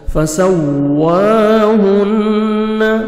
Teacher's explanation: فسواهن، ہا کو اچھی طرح پڑھیں گے، ہا میں دا کے ساؤنڈ مکس نہ ہو، نون مشدد غنہ کریں گے، نوز میں ساؤنڈ لے کے جائیں گے.